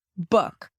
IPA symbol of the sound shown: ʊ